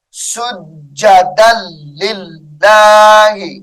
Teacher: لام زیر لل، سجدا لل، لام کھڑی زبر لام، سجدا للہ، اس میں جلالت اللہ کا لام باریک ہوگا